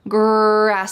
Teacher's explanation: This is the R sound, or in American English, we often call this the colored R because it's very strong.